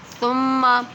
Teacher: ثم میں سیٹی نہیں نکلے گی کیونکہ سیٹی نکلتی ہے سین میں، سا میں سیٹی نہیں نکلے گی۔